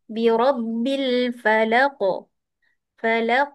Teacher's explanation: Bila qalqalah qaf bunyi seperti keluar balik qaf baris atas juga.